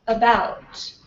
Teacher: it's a very very neutral sound as you can tell by its position on the chart it's neither High nor low neither front nor back lips or NE neither spread nor rounded it's just right in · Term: schah